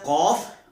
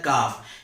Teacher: تھوڑا موٹا کر کے پڑھا جاتا ہے قوف، اور تھوڑا ایک باریک کر کے پڑھا جاتا ہے کاف